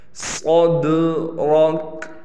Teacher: الم نشرح، را کو پر کر کے پڑھیں گے۔ لک صدرک، صاد کو موٹا پڑھنا ہے، دال پہ قلقلہ ہوگا اور را بھی موٹا پڑھا جائے گا